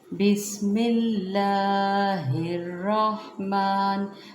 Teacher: بسم اللہ، ہا کو پھر ہم را کے ساتھ ملاتے ہیں، الرحمن نہیں پڑھنا، را کو اوپر زبر ہے، اس کو پور پڑھیں گے، ہا کو را سے ملائیں گے، بسم اللہ الرحمن۔